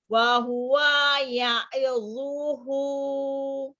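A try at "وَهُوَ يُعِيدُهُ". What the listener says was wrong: Nggak boleh wahwa karena bukan pisah spasi, sementara wanya itu pendek. Sugesti kita ketika ada spasi itu kita yang memisahkan gitu katanya itu, maka saya tegaskan sekali lagi jangan coba-coba ketika harokatnya pendek, kecuali kalau dia panjang ya. Jadi kalau belum ada yang panjang jangan dijeda.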